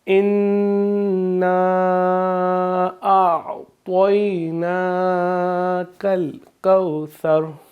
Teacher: ثا میں سیٹی کی آواز نہیں آئے گی۔ کو لمبا بھی نہیں کریں گے کیونکہ مد لین ہے، اس کو ہم کھینچیں گے نہیں۔